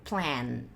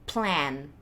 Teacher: Daí, quando eu chego no N, por causa do N, o som fecha um pouco.